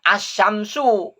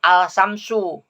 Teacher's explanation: Alif lamnya itu tidak dibaca dengan jelas tapi bertemu dengan tasydid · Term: alif lam syamsiah